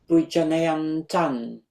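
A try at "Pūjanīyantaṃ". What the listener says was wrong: Very good, exactly.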